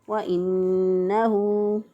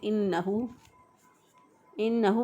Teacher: وانه، اب نون مشدد ہے، مشدد حرف میں نے آپ کو بتایا نون مشدد اور میم مشدد ان دونوں حروف پر گنہ ہوتا ہے، ایک الف کے برابر ناک میں گنہ کی آواز کو، نون کی آواز کو ٹھہراتے ہوئے ادا کریں گے۔